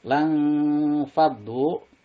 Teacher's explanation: Lang fadu di sini ada nun mati bertemu dengan huruf fa, berarti ikhfa. Bacaannya samar mendengung, ditahan 2 rakaat.